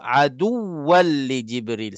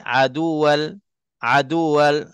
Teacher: Cara sebut mesti nak kena singgah pada waw mati tu yang tak ditulis pada huruf yang sabdu tu. Aduwal. Baru pergi kepada wal.